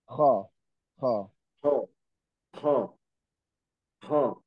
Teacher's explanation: Ini kho itu hurufnya itu halki, kita tenggorokan nih. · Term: huruf halki